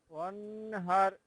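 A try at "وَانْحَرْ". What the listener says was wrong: হার না, হার গলার ভিতর থেকে। ওয়ানহার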